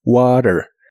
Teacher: La T de water en inglés americano se suele pronunciar como R, water. Y la O de soda se pronuncia como OU.